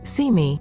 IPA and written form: siː mi (See me)